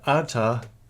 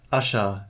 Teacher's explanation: If a sequence of R and T was preceded by the accent in Old Avestan and Young Avestan alike, by the way, the sequence RT developed to sh. Thus, original arta gives asha in the transmitted Avestan text.